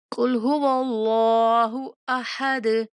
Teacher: قاف کو موٹا پڑھیں گے۔ قل هو اللہ کو بھی موٹا، ہو نہیں پڑھیں گے، ہو موٹا بھاری باز میں پڑھیں گے۔ · اللہ کلام کو موٹا کر کے پڑھیں گے، دال پہ قلقلہ کریں گے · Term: موٹے کاف